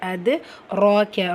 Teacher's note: தால் சுக்குன் பெற்று வந்திருக்கு. கல்கலத்துல் சுக்ரா வார்த்தையோட இடையில வந்திருக்கிறனால சிறிதாக அசைச்சு ஓதுனால் போதுமானது. அது ராக்க. ரா அலிஃப் சகீரா இருக்குது.